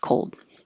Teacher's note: you have to hold the L position for a longer duration than you think you need to, probably, so that the L can be heard.